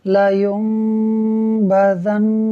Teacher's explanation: دیکھیں یہاں ناظرین نون ساکن کے بعد با اقلاب تھا، با کا حرف آ رہا تھا، لہٰذا یہاں اقلاب ہوگا، یعنی ہم نون ساکن کو میم سے بدل کر اخفا کریں گے، غنہ کر کے پڑھیں گے